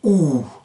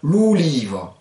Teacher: ça va donner une sorte de OU prolongé